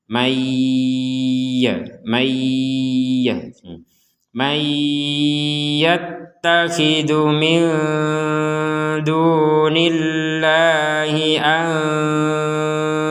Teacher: Nun sukun bertemu dal, maka kita membacanya dengan samar. · Karena tidak dimasukkan atau tidak digabungkan dengan huruf ya. Kalau digabungkan maka nun sukun yang barusan jelas kita masukkan ke ya, sehingga terbacanya bukan man lagi tapi dibaca dengan may disertai dengungan.